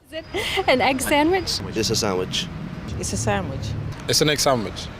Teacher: first the d disappears in between two consonants.